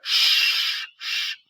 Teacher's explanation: So it is voiceless palatal, because you move from the alveolar ridge to the hard palate, the beginning of the hard palate. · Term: sh sound